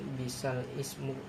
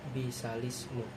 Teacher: Jadi cara membacanya memindahkan harakat kasrah sehingga bunyinya bukan bisal ismu tetapi bisalismu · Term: naqal